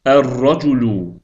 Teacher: əl artiklının ləmini tələffüz etmədik. Onun əvəzinə isə ra hərfinin üstündə şəddə qoyduq.